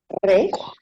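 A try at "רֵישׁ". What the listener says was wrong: Resh, yes.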